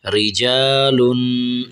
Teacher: آخر میں غنہ کرنا ہے، آواز کو ناک میں سے نکالنا ہے، رجالن۔ یہ را کو ہم نے باریک کرنا ہے، ٹھیک ہے۔